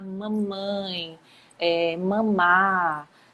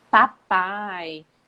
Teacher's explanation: são feitos com o encontro do lábio superior com o lábio inferior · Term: bilabiais